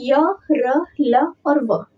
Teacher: हमारे मुंह में जो हवा होती है वो किसी भी भाग को नहीं टकराती है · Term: अंतस्थ व्यंजन